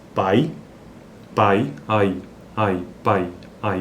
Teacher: Veja que esse i ele é mais fraco, então, porque ele é semivogal, por isso que ele é um decrescente. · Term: ditongos decrescentes orais